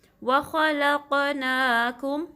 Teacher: پڑھنا ہے، ٹھیک ہے، خا، لام کو قاف سے ملانا ہے، قاف کو ہیوی پڑھیں گے اور قاف پہ کلکلا کریں گے ، ٹھیک ہے، وَخَلَقْنَاكُمْ، نا کو 2 کاؤنٹ سٹریچ کرنا ہے،